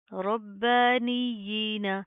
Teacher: खड़ी जेर की भी क्या खड़े ज़बर की तरह सेम अदायगी होती है, एक अलिफ की लिमिट के बराबर खींच कर पढ़ेंगे